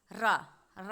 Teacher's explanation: जब हम रा का उच्चारण कर रहे हैं तो हमारी जो जीभ है लिपट जा रही है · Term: लुंठित व्यंजन